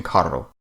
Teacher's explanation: Finally, a double R is trilled, such as in carro.